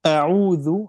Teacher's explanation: Tolong perhatian, bukan au, jangan ada gunna. Tidak ada sifat gunna dalam huruf ain. Sifat gunna hanya dalam huruf nun dan mim.